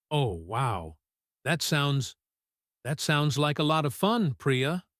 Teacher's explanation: He uses the word wow, but he does not say it with high energy. He says it with a flat or slightly falling tone. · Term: the sound of reluctance